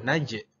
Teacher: harus qalqalahnya harus dipantulkan sampai terdengar bunyi j